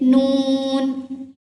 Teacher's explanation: जुबान की नोक ऊपर वाले सामने दोनों दांतों के मसूड़ों से लगे तो ये वर्ड अदा होगा, जैसे नून।